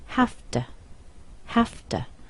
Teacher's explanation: This t here gets softened a little bit. It sounds like d. · we've changed this v to an f.